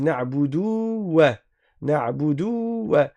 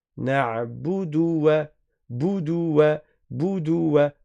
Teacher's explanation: Il n'y a pas un waw après le del à prolonger.